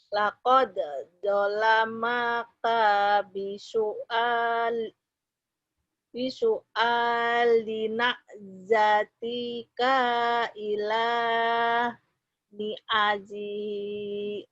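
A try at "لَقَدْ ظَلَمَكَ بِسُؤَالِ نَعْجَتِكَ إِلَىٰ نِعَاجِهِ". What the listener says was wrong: Ini kayaknya pendek ya. Ni'anya panjang nih. Laqad zalamaka bisu'alina jatika ila ni'ajihi. Coba ulang.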